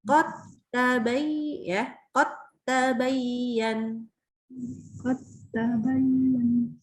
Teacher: Dalnya hilang sama sekali langsung ke ta.